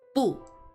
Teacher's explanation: which uses the fourth tone cuz it's going down